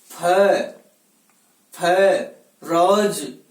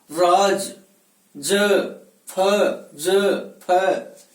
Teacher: ऊपर वाले दांतों से नीचे वाले होठों को दबा करके बलपूर्वक इनका उच्चारण किया जाता है। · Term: नुक्ते का उच्चारण